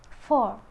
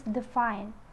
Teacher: we're going to the fricative sound for the first sound is is voiceless labiodental fricative